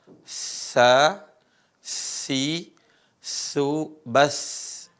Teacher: Huruf sa, perhatikan, ujung lisan ketemu dengan gigi seri atas.